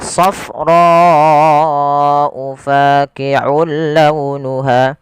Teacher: Panjangkan huruf ro sepanjang empat harakat. Karena di sini ada bacaan yang kita namakan dengan mad wajib muttasil.